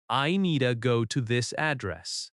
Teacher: In natural American speech, need to often reduces to needa.